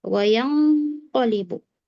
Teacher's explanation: nun sukun ketemu qof berikutnya qof berarti dia tebal ikhfanya juga ikhfa tebal ya ditebalkan